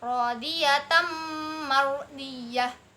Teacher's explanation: Kemudian mardiyah di sini ada hukum bacaan ro. Ro sukun yang didahului oleh fathah, maka dibacanya tafhim · Kemudian rodiyatan mardiyah, fathah tanwin bertemu dengan mim, hukum bacaannya idgham bi gunnah